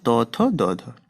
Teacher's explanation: জীবা দন্তে স্পর্শ হয় তাকে বলবো আমরা দন্ত ব্যঞ্জন